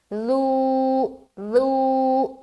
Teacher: نرمی کے ساتھ اور کھینچیں گے بھی، لو لو، سیٹی کی آواز نہیں آئے گی